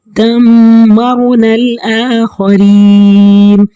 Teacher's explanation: اب رو کے اوپر جزم ہے، پیچھے زبر ہے تو اس لیے رو کو موٹا پڑھیں گے